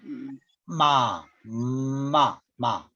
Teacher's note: 소리를 코로 내면서요. 입술을 막으면 미음 소리가 돼요.